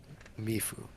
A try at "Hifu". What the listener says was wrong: He, with an H. Hifu.